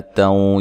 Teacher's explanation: یہاں نون تنوین کا ادغام ہے مع الغنہ